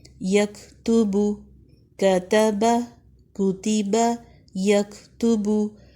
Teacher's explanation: Next یکتبو، یا زبر کاف، کاف جو ہے حروف ہمس میں سے ہمس کریں، توبو باریک حروف ہیں۔